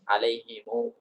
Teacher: nyambung mim jamak dengan wau berarti ditambah setelah mim Jamak itu mim Jamak itu didamahkan kemudian dipanjangkan dua harakat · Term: Silah